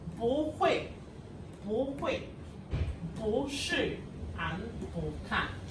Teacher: When bo is followed by a syllable in the fourth tone, this is fourth tone, then it changes into the second tone.